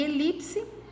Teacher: a sílaba mais forte dela é a penúltima Então ela é uma paroxítona